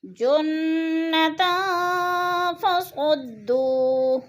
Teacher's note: تن، 2 زبر تنوین، آگے فا حروف اخفا میں سے ہے، تن میں اخفا کریں گے یعنی ناک میں آواز کو چھپا کر پڑھیں گے